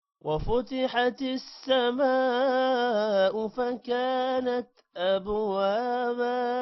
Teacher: ابوابا با پر قلقلہ ہوگا